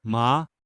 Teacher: the second tone is a rising tone over time